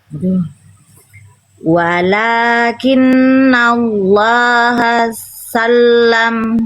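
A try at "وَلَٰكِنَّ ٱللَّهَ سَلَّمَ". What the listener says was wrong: Sinnya jangan ditekan Bunda. Bunda coba baca ikuti saya. Hasalam. Hasalam. Sinnya nggak perlu ditekan. Hasalam. Nggak, tapi Hasalam. Ini yang ditekannya tasdidnya di huruf lam, bukan di huruf sin. Jangan ditekan sinnya. sinnya dibaca hasa aja Bunda.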